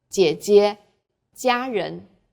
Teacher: G is like the J in Jeep, but press your flat tongue tightly against the back of your upper teeth.